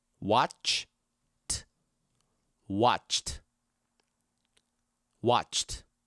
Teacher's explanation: watch ends with a ch sound, which is an unvoiced sound. So all we're going to do is add t at the end of the word.